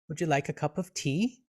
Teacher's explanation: with the sound of the word sort of rising upward we know ah this is a question